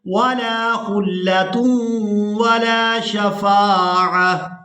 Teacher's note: وقف کی صورت میں اس ایک آنکھ والی تا کو ہا میں بدل دیں گے اور ساکن ادا کریں گے